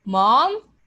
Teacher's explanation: like a rising question